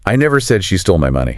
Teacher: I'll focus the stress on the very first word.